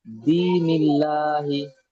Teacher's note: আল্লাহর শব্দের লাম মুশাদ্দাদের পূর্বে জের এসছে তাই আল্লাহ শব্দের লামকে বারিক করে পড়তে হবে